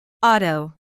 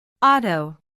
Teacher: la vocal O será pronunciada con un sonido de diptongo representado por la O y un símbolo de omega invertido. El mismo que se produce pronunciando una vocal O, que será transformada en una U.